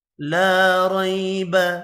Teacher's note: لا الف مدہ ہے، 1 الف کی مقدار میں کھینچ کر پڑھنا ہے۔